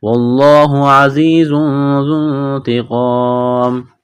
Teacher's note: تنوین کے بعد ذال ہے تو یہاں پر غنہ کریں گے، آواز ناک میں چھپائیں گے